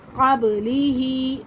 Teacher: ہا کھڑی زیر ہی ہے، یہ بھی 1 الف کے برابر کھینچ کے پڑھا جائے گا۔